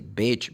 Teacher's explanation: Because beach is E sound. Because if you make this sound short, instead of saying beach, you say bitch